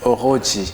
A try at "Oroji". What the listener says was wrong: Oroji. Oroji. C'est pas du français, on ne dit pas Oroji, ça c'est français. Oro, on roule avec la langue. Oroji.